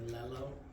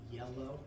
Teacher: The L, your tongue is up. The Y, your tongue is down. And just the back in the middle of the tongue hits yellow.